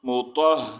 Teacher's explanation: ہا کی آواز سینے سے نکالنی ہے